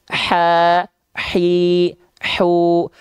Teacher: kalau hak kecil di sini nafasnya berbisik